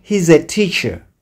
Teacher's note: Kama neno linalofuata linaanza na irabu, yani vowel, utafanya liaison pale ile s na irabu inayofuata. S ya is na irabu inayofuata unazitamka pamoja.